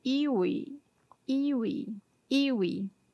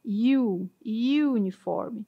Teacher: ele é considerado com som de Y, né? Que é uma consoante, apesar de vocês verem escrito com a letra E